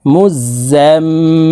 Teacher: এই যা তাসদিদ ওয়ালা মিমের সাথে নাকের বাঁশি থেকে তিন সেকেন্ড পরিমাণ গুন্নাহ করে ধরে রাখবো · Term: ওয়াজিব গুন্নাহ